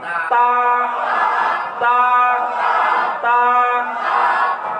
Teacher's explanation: তা এর উচ্চারণ জিহ্বার অগ্রভাগ, জিহ্বার কি মানে আগা, সামনের উপরে দুই দাঁতের গোড়ার সঙ্গে মিলাইয়া।